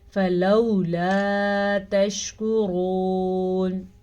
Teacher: را کو پر پڑھنا ہے کیونکہ را کے اوپر پیش ہے